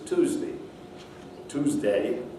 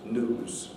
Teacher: in american english one has the effect of yod dropping